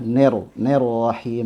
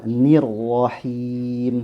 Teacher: Ya, imalah ner, ner rahim tidak boleh. Ya, kasrohnya harus jelas, ni kena ro-nya langsung tebal, nirwahim seperti itu.